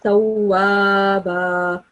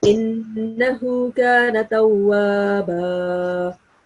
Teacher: You're not supposed to prolong the alif sound here. You're supposed to stress a little bit on the wow because of the mushaddad, wow mushaddad here.